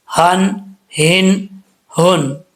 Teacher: इस हा का ताल्लुक सीने की तरफ है हल्क की तरफ नहीं है ठीक है इसको भारी आवाज के साथ पढ़ेंगे भारी साउंड के